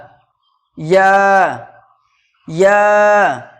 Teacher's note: জিহ্বার মাঝখান তার বরাবর উপরে তালুর সাথে লাগিয়ে উচ্চারিত হয় ইয়া। ইয়া, জিহ্বার মাঝখান এবং তার বরাবর উপরে তালুর সাথে লাগিয়ে উচ্চারিত হয় ইয়া।